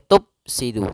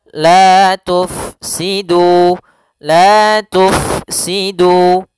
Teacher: Huruf Fa sukun tidak boleh dibaca dengan Pa no tidak boleh ya harus dibaca dengan adanya aliran tidak boleh tertutup sehingga tidak ada nafas yang dikeluarkan tidak boleh tup Sidu tapi